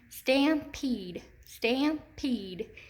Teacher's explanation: And if I say it with my hand under my chin, stampede, stampede, I can hear that long E in the second syllable.